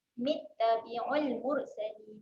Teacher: huruf mim baris bawah terus masuk pada bunyi huruf ta